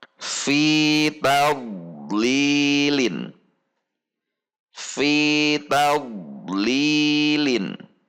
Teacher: huruf dhad sukun berada di tengah kata, maka tidak terpisah antara dhad sukun dengan huruf yang ada di depannya